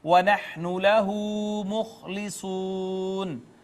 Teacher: وَنَحْنُ لَهُ مُخْلِصُونَ، ناظرین واو المدیہ الصغیرہ، خا حروف حلقی میں سے اور حروف تفخیم میں سے بھی ہے، پر کر کے پڑھیں گے۔ صاد بھی حروف تفخیم میں سے ہے۔